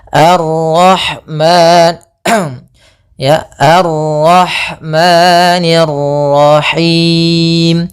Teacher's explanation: Ma ada mad thabi'i yaitu fathah bertemu alif panjangnya dua harakat.